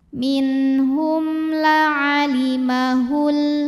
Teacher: mim sukun menghadapi huruf selain mim dan ba yaitu lam, maka mim sukun dibaca jelas. Minhum la'alimahul. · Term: izhar syafawi